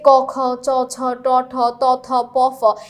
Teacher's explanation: প্রথম দুই সারির সবাই হচ্ছে অঘোষ